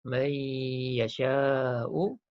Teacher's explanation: Dengung dan masukkan ya tu ke dalam nun. Jadi man jadi mai, masuk ya. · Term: idgham ma'al gunnah